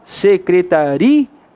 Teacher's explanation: na palavra secretaria, a gente não tem acentuação porque a sílaba tônica é ri. · A pronúncia mais forte é do ri, de fato.